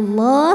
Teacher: lam pada lafaz Allah dibunyikan secara tafhim sebab huruf sebelumnya barisnya fathah maka dibacanya tebal bunyinya Allah pangkal lidah naikan kemudian Alif lamnya dinamakan dengan alif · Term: tafkhim